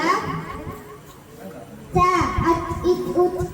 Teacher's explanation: நாவின் நுனி மேல் வரிசை நடுப்பற்களின் நீரை தொடும் பொழுது ஒலிக்கப்பெறுகின்றது